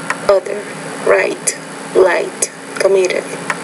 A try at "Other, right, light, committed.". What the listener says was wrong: Not bad.